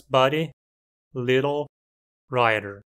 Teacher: um D ou T intervocálico se torna um TEP